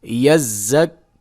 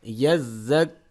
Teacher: زا کو سیٹی کی آواز سے پڑھیں گے اور زال کو نرمی کی آواز سے پڑھیں گے